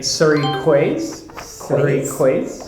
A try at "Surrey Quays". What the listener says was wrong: Okay, again, I think it's French. Okay, that is pronounced key. Key. Keys. Surrey Keys.